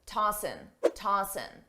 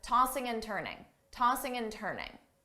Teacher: commonly, a native speaker will drop the G sound on tossing, ing, and just say tossin', tossin'.